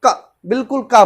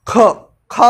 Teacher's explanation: खा उच्चारण किया तो क्या हुआ, मुख से हमारी हवा बहुत ज्यादा ही निकली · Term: महाप्राण